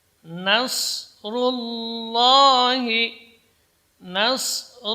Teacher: ru tebal karena berharakat dhammah. Idza jaa nasrullahi, nasrullahi, lafzul jalalahnya juga di sini dibaca tebal.